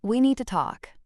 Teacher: The flat measured tone immediately signals importance and gravity.